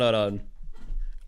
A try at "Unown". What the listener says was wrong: You sounds like you're saying unown, like with a space in there. It's unknown. Unknown.